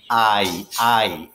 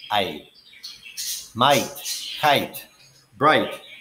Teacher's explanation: it's ah followed by e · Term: long i sound